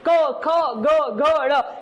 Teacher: गले से आपके ऊपर तालवे पे जीभ टच हो रही है।